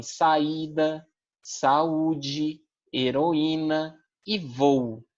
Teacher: formam sílabas separadas então dentro da palavra as vogais se encontram porém elas não estão dentro de uma mesma sílaba